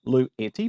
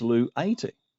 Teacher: The short vowel epsilon becomes the long vowel eta.